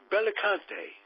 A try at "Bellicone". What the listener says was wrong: Bellicone, no T. Yeah, close enough.